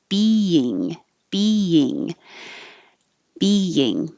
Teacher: you do have to make the e sound twice being being your tongue can lower a little bit like a y